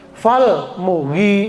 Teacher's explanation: Fal mughi, yang panjang ghi, rin. Mu-nya nggak dibaca panjang.